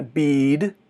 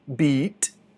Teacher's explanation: A única diferença é que bead é comprido e beat é curto. E mais nada.